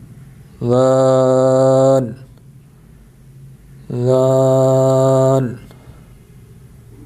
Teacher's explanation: زبان کی نوک کو سامنے والے اوپر کے دو دانتوں کے اندرونی کناروں سے نرمی سے لگا کر باریک آواز میں پڑھیں، یعنی ذال ذال۔